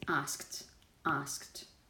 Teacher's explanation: If the last sound in a verb is a voiceless sound, like k, then what you have, just by contact, is the voiceless version.